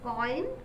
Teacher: Okay, O and E, short O and E combined together to form the phoneme, to form the diphthong oi